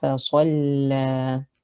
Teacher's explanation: Lam has a shadda. Make sure you observe it. فَصَلَّى. Hold the lam before saying the fatha of it. And then you have the alif, natural mud at the end, extended for 2 counts.